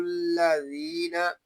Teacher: ذال کو ہم یہاں ایک الف تک کھینچ کر پڑھیں گے کیونکہ یہاں پہ یا مدہ ہو رہا ہے۔ یا مدہ اس لیے ہو رہا ہے کہ یا ساکن سے پہلے زیر آ گیا ہے۔